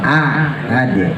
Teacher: Alam ahad, alam hamzah jelas, alam ahad yang pertamanya a baru ain, jangan ditekan dua-duanya ya, jangan ahad, nah itu nanti jadi ain dua-duanya. A-nya yang pertama biasa, ainnya baru tekan.